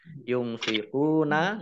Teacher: nun sukun bertemu dengan huruf fa, bacaan ikhfa, dibaca samar-samar.